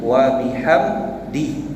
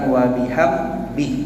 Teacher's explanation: dia bukan sebut wa bihamdi, bukan huruf dal, dia sebut huruf ba